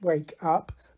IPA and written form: ˈweɪk ˈʌp (wake up)